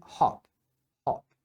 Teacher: no inglês britânico eles falam o mais fechado